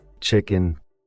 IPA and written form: ˈtʃɪkən (chicken)